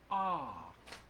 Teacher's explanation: I'm not moving anything so that is a pure vowel